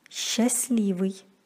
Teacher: С-т-л произносится как с-л. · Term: Непроизносимый согласный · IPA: [sch'aslivyj]